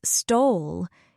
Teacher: If I stress stole, it means maybe she borrowed the money, but she didn't steal it. I didn't say she stole the money.